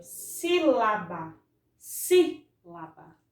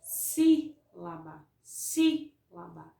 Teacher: Observe que a sílaba si, eu pronuncio ela com mais força e eu estendo mais na hora de pronunciar. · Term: proparoxítona